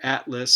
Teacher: so that's before a sonorant we have a voiceless stop